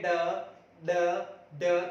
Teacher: हमारी जो जीवा होती है वह पलट कर जो हमारा मूर्धा होता है उन्हें एक झटके के साथ छू कर फिर इसका उच्चारण करती है, इसलिए इनको ताड़न जात भी कहा जाता है। · जो हमारी जीवा है वह इनके उच्चारण में 2 बार हमारे मुर्दे को छूती है, यानी कि 2 बार टच करती है, इसलिए इनको द्विस्पृष्ट भी कहा जाता है।